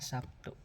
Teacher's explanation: terlihat bunyi B berubah menjadi P sebagai akibat pengaruh bunyi t bunyi b adalah bunyi hambat yang bersuara sedangkan bunyi t adalah · Contohnya seperti kata Sabtu dalam bahasa Indonesia lazim dikatakan Sabtu, di mana terlihat bunyi B berubah menjadi P sebagai akibat pengaruh bunyi T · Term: asimilasi